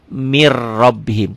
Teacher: Ya, idgham bila gunnah. Idgham diidghamkan, dileburkan tanpa didengungkan, tanpa ditahan.